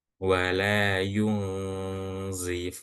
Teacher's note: nunnya disamarkan kemudian ditahan selama dua atau tiga harakat ya. Dan posisi mulut iya itu bersiap-siap atau ancang-ancang. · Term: ikhfa